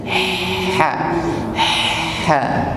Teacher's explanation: Makhrajnya wasatul halq, tenggorokan bagian tengah. · Sedangkan ha naik satu tingkat di tenggorokan tengah. Ha. Ada nafas yang menyertainya